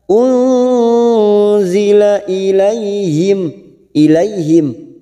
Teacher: nun sukun bertemu zain, ikhfa hakiki, kita samarkan bunyi nun sukun 3 harokat